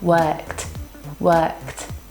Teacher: Sounds like work ends in k sound. This is unvoiced. The sound would be worked, worked, with a T sound.